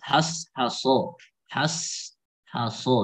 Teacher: Ha juga jangan dibaca tebal, ya harus tipis.